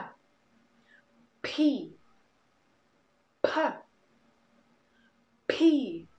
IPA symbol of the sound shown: p